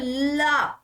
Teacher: प्रवाह मुख्य विवर में जीवा के द्वारा किसी स्थान पर अवरुद्ध किया जाता है तथा वायु जीवा के बगल से प्रवाहित होने लगती है। पार्श्विक ध्वनि कहलाती है।